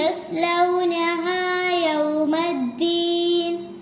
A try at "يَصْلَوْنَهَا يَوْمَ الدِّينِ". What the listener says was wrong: യസ്ലൗനഹ സ്വാദാണ്, സീനല്ല. പിന്നെ യൗമദ്ദീൻ ദാലാണ്, അതിന് പ്രത്യേകം ആണ് കട്ടി ആക്കി ശബ്ദം ഉണ്ടതിന് പ്രത്യേകം വെളിവാക്കിയിട്ട് തന്നെ ഉച്ചരിക്കണം. യസ്ലൗനഹ യൗമദ്ദീൻ.